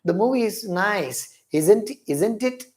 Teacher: when we use a question tag if the voice of the person falls down it is called falling tone